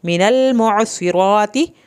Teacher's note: اب یہاں پر لام نہ ہلے کیونکہ لام اکثر ہل جاتا ہے ساکن حالت میں. عین کو حلق سے پڑھنا ہے، صاد کو پر کرنا ہے. من المعصرات.